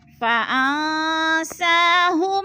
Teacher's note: نون ساکن کے بعد سین حروف اقفا میں سے آگے ہے تو ادھر اقفا ہو رہا ہے، یعنی غنہ ناک میں آواز کو چھپا کر پڑھیں گے